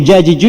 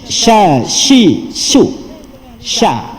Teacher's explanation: Duduk bahagian tengah lidah yang naik ke atas.